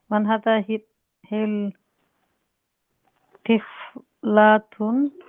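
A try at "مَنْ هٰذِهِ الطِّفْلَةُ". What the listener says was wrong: Yeah, we don't pronounce the lam because the ta is a sun letter. So man hadhihi tiflatu.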